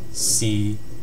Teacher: It's a flat low pitch tone. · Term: Tone six